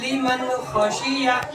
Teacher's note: اس نون ساکن کی آواز کو جلدی سے ظاہر کر کے پڑھیں گے، آواز نہیں روکیں گے۔ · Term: اظہار